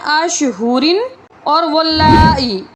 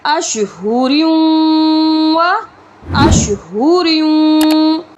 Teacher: اچھا، تو یہاں پر مسٹیک یہ ہوتی ہے کہ لوگ یہاں پر پڑھتے ہیں اشہورن اور واللائی، یہاں پر تنوین کو ہم نے واو کے ساتھ ڈائریکٹ ملانا ہے، تو یہ ادغام ہوگا۔ ادغام کہتے ہیں ملانے کو، یہاں پر ہم نے را کو واو کے ساتھ ملا کر پڑھنا ہے اور غنہ کے ساتھ ملانا ہے، یعنی اشہوریوں و اشہوریوں۔